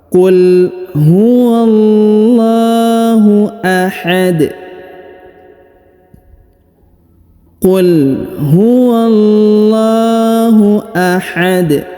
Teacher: bacaan kita di ujung ini maka huruf dalnya kita sukunkan dan karena dia berharakat sukun maka dibaca pantul ya maka dibaca pantul atau Qalqalah